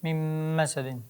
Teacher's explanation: sukunlik nundan keyin mim harf kelsa nunni mimga kirgazib yuboriladi. Ya'ni nunni ham mim qilib o'qib yuboriladi. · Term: idom